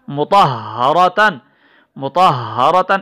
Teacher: ہا کی آواز سینے سے ادا ہو رہی ہے، دوسرا یہ مشددہ بھی ہے، ٹھہراؤ بھی ہو رہا ہے